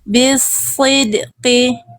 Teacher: Bunda sudah bagus menebalkan shadnya. Keren. Tebal pangkal lidahnya. Jelas tebalnya.